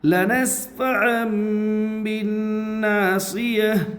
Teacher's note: نون کے اوپر تشدید ہے، تشدید والے حرف کو 2 مرتبہ پڑھتے ہیں، ایک بار پہلے حرف سے ملا کر اور ایک بار خود سے۔ تشدید کی آواز میں ایک قسم کی سختی ہوتی ہے، نون مشدد میں ایک الف کے برابر غنہ ہوگا۔ الف سے پہلے زبر ہے، اس لیے الف مدہ ہوگا، الف مدہ کو ایک الف کے برابر کھینچ کر پڑھے۔